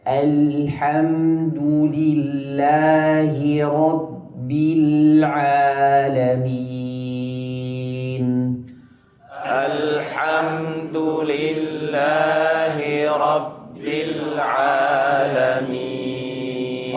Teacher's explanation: Hanya di lafzul jalalah lam itu kita tebalkan. Adapun di seluruh kalimat semua lam diucapkan dalam keadaan tipis.